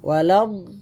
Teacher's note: Waladdallin itu do situ panjang 6 harakat. Tapi harusnya ada tasydid lam. Waladdallin. Tapi jangan lamakan. Jangan dipanjangkan tasydid itu.